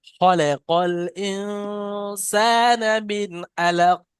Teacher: শেষে কফটা যখন সাকিন হবে আয়াত করার কারণে কফকেও কলকলা করতে হবে। খলাকাল ইনসানা মিন আলাক।